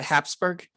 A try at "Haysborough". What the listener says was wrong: Oh, you're close. You don't pronounce the P at all. It's Haysborough.